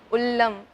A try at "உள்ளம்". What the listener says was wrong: இல்லையா, அந்த லாவே வரல. நீங்க நல்லா பயிற்சி எடுத்துக்கணும். ஆனா உள்ளம், சரியா சொல்லணும். எனக்கு எந்த லா பிரச்சனைன்னு தெரியுதுல்ல,